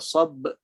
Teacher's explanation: Bunyinya sabr. Disebabkan ada lantunan qalqalah di situ, maka kita dengar bunyi dia rapat atau cepat bunyi dia. Tak ada gap.